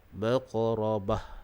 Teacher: Huruf ra dibaca dengan tebal dan waqaf dengan ha.